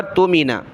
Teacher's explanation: آگے اس ذال کو ہم نے حمزہ کے ساتھ ملانا ہے، یا کو نہیں پڑھنا، اور حمزہ ساکنہ ہے تو جھٹکے کے ساتھ پڑھنا ہوگا